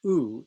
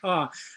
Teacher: effect of intrinsic pitch and this means that if you take a low tone in a high vowel like ooh and compare it to a high tone in a low vowel like ah the fundamental frequency is actually fairly similar